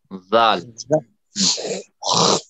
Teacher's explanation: زبان کی نوک جو ہے اوپر کے دانتوں کے کناروں سے لگا کر زال ادا کیجیے